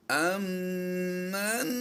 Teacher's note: حمزہ نون میم زبر ام کی آواز ہوگی، یہاں پر ام کی آواز کیوں دیں گے ہم؟ یہ نون کو میم میں مدغم کر دینا ہے، تو اس نون کی آواز سائلنٹ ہو جائے گی اور میم کی آواز اس میں حمزہ کے ساتھ مل جائے گی۔